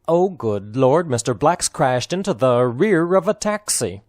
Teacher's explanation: the rear of a taxi distressed words are oh and lord the word good is unstressed